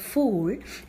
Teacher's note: Close vowels as the name indicates are wobbles during the articulation of which the tongue is raised as close to the roof of the mouth as possible. That is the tongue is raised up to the vowel limit.